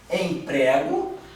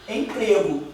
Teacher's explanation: O ezinho, um é aberto e outro fechado.